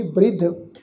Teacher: ਬੱਬੇ ਨੂੰ ਜਿਹੜੀ ਸਿਹਾਰੀ ਆ ਉਹ ਰਾਰੇ ਅੱਖਰ ਨੂੰ ਲਾ ਕੇ ਸਿਹਾਰੀ ਉਚਾਰਨ ਹੋਏਗੀ